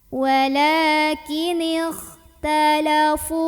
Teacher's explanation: Maka huruf fa yang baris dhammah ini dipanjangkan sepanjang 2 harokat saja. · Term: mad tabi'i